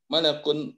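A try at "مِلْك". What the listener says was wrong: Mil bukan malan, bukan malak. Kalau malak itu malaikat. milk.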